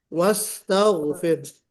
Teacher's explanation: خالی سین میں تھوڑی سی سیٹی یعنی صفیر اور ہونا چاہیے